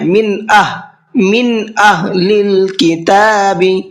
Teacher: نون کی آواز میں غنہ اخفا کچھ بھی نہیں کرنا ہے، صاف صاف پڑھنا ہے۔ من اہل الکتاب، اور ہا کو جو ہے شروع حلق سے نکالنا ہے۔